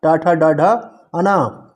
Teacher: टा वर्ग में जो आते हैं वो सभी मूर्धन्य में होते हैं